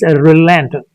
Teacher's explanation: on the second syllable there is a stress